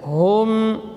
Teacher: mim sukun kemudian ain izhar syafawi, bibirnya rapat dan ditekan. Hum gitu. Tetap mengalir sebagian dari suara karena mim juga huruf tawassut.